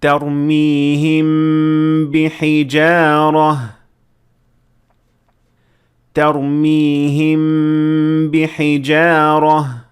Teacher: لفظ ترمیہم کے آخر میں ہونٹ بند ہوتے ہیں، اور اگلے لفظ بحجارہ کے شروع میں بھی ہونٹ بند رہتے ہیں۔ پھر آپ ہونٹ کھول کر با کی آواز ادا کرتے ہیں۔ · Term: میم ساکنہ کے اخفاء